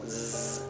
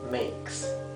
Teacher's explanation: Sin embargo, la S no es la S vibrada, como el zumbido de abeja, como zzz, no es así. La S es suave, como silbada.